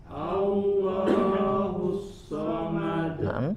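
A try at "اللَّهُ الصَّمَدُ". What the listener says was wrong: Lo-nya pada kata lamnya 2 harokat saja, cukup sebentar. Allahus somad.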